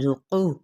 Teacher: ذُقُ، زا سفیریہ لیٹر ہے، یعنی سیٹی کی مانند آپ نے آواز نکالنی ہے. ذُقُ، قاف حروف مستعلیہ میں سے ہے، پر پڑھنا ہے موٹا کر کے